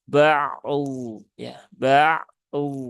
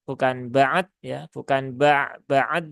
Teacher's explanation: Ainnya itu punya sifat tawasud dan dotnya itu punya sifat rokhawah dan juga istiqolah.